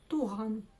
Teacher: Нужно просто откашляться через букву Г обыкновенно. Или отхаркнуться.